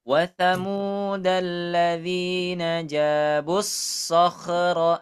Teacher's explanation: Huruf kho ini jangan sampai mantul ya